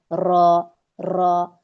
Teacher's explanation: यानी जब हम र को पढ़ते हैं तो इसमें र कई सारे र की आपको आवाज आ रही है जब आप पढ़ेंगी। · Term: तकरार